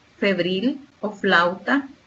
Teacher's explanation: sonido son los dos labios como mamá o papá super fácil el fonema consonántico también labio dental en el cual los órganos que intervienen en la producción del sonido son el labio inferior y los dientes superiores